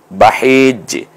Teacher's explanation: গলায় চাপ দিয়ে জিমটা কলকলা এবং একটু নিচের দিকে টান থাকবে এটার।